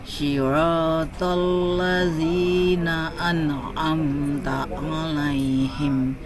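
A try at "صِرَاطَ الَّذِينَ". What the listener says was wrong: Nah, mohon maaf Ibu, di sini lamnya tidak boleh tebal, tidak boleh terpengaruh huruf to. Tidak boleh bacanya siratal ladzina. Harus siratal ladzina.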